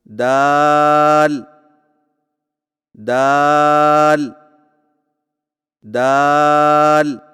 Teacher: دال کی ادائیگی میں زبان کی نوک کو سامنے والے اوپر کے 2 دانتوں کی جڑ سے لگا کر باریک آواز میں پڑھیں